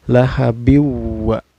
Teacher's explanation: Cara bacanya memasukkan dari tanwin kasroh ke wawu ya, bukan lahabin ya cara bacanya, tapi harus dimasukkan lahabiwa, memasukkan sambil berdengung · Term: idgham bigunah